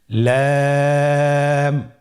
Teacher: লাম হরফটি উচ্চারণের ক্ষেত্রে অবশ্যই বারিক হবে এবং 3 আলিফ টেনে পড়তে হবে।